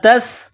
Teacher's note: سین میں سیٹی کی آواز پیدا کرنی ہے